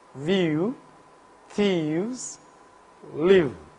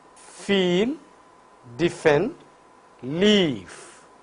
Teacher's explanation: Vocal cords vibrate for v, held apart for f. So, v is voiced labiodental fricative, while f is voiceless labiodental fricative.